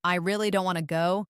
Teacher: if someone says, I really don't want to go, the word really is stretched